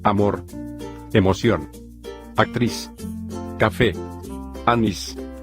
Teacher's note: las palabras agudas llevan la mayor fuerza de voz en la última sílaba